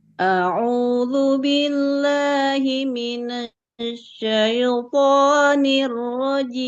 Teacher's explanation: tadi jimnya kepanjangan sedikit ya